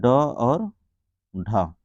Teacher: ड और ढ यह कौन से व्यंजन होते हैं मुर्धन व्यंजन होते हैं